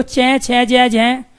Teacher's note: जब आप कह रहे हो च छ जय जय, तो आपकी जीभ बार बार नीचे लग रही है, तो उसी स्थान को तालव्य कहते हैं।